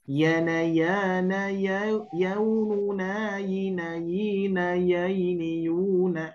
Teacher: posisi lokasi makhrajnya adalah di tengah lidah, sama dengan jim. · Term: huruf lin